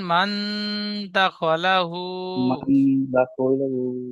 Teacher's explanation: নুন সাকিনের আওয়াজকে নাকে তুলে এক আলিফ পরিমাণ গুণনা করে নাকে পড়তে তুলে হবে। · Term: ইকফা